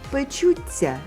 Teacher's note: Сі завжди дає ци подовжений і м'який.